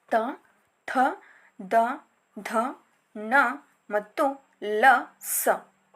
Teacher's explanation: ಹಲ್ಲುಗಳ ಬಳಿ ಹುಟ್ಟುವಂತಹ ಅಕ್ಷರಗಳೆಲ್ಲವೂ ದಂತ್ಯ ಅಕ್ಷರಗಳಾಗಿ ಗುರುತಿಸಲ್ಪಟ್ಟಿವೆ. ಈ ಅಕ್ಷರಗಳು ಹಲ್ಲುಗಳ ಸಹಾಯದಿಂದ ಉಚ್ಚರಿಸಲ್ಪಡುತ್ತವೆ.